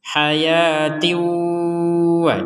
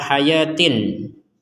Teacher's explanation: Kasrotain ya akan bertemu dengan waw, maka kita bacanya dengan dimasukkan dan didengungkan.